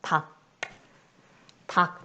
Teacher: 닭, 리을, 기읍 겹받침이지만 발음은 자음군 단순화가 일어나서 기역만 발음이 된다.